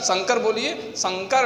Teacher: शंकर में जो ध्वनि निकल रही है, वायु ध्वनि, वो केवल नासिका से निकल रही है, इसीलिए ये अनुस्वार है।